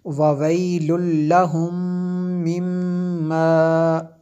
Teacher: میم ساکن کے بعد دوسری میم ہے، تو یہاں پہ ہم نے غنہ کیا، ادغام شفی ہے، اسی طرح یہ میم شدد ہے اس لیے غنہ کیا۔